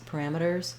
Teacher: The letter S is going to say a Z, but the way we say Z at the ends of words in words like parameters is that we just do a really, really light S